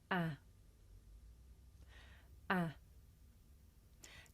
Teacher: This is a short vowel sound. It's pronounced ah. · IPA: /æ/